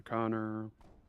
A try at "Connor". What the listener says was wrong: why do you say my name like it's got two N's in it?